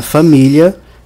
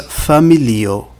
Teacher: Na primeira, a vogal tônica é o primeiro i. Na segunda, que é Esperanto, a vogal tônica é no segundo i.